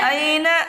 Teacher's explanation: یالین کو نرم آواز کے ساتھ جلدی پڑھیں، معروف پڑھیں، مجہول آواز سے بچیں،